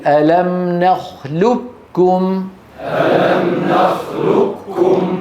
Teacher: اتفق اهل الاداء على ادغام القاف الكاف منها ثم اختلفوا ف ذهب الجمهور منهم الى جعله ادغاما محضا مستكمل التشديد